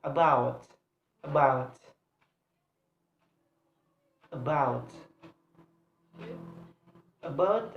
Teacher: the stress is placed on the second syllable